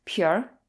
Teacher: in northern China, people like to put R's after a lot of nouns, and the R often merges into the preceding syllable